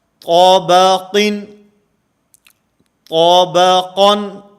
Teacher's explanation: آخر میں قاف بھی موٹا ہے، اور درمیان میں با جو ہے یہ باریک ہے